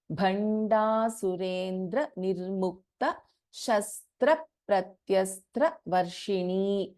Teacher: Bha is a Mahaprana and Da is an Alpa Prana here.